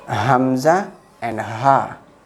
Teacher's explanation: Hamza and Ha from bottom part of the throat. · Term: the letters from the throat